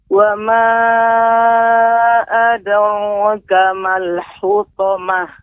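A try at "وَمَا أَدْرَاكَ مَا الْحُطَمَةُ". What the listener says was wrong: Ada ro, ya. Pengucapan ro, ya, bukan menggunakan mulut kita, rongga mulut kita, sehingga kita jadikan seperti seperti membuat lengkukan, maksudnya tidak, ya, akan tapi memang lidah kita yang kita tebalkan, ro, ya. Adapun bibir kita tetap adara, tidak adoro, ya, demikian.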